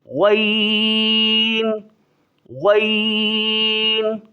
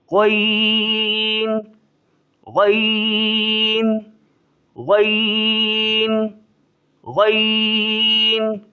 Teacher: زیادہ کھینچیں گے، ایک مد کے برابر، اور تھوڑا سا منہ گول کر دیں گے، غین غین، تھوڑا سا منہ گول کر کے پھر پڑھیں گے، اور اس منہ کو پھر چھوڑ دیں گے، ایسا نہیں ہے منہ کو گول کر کے رکھیں گے پھر یہ لفظ نہیں نکلے گا، غین غین غین غین، سمجھ آ گیا بیٹا۔